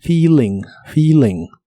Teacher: la doble e de esta palabra se pronuncia como una I larga o doble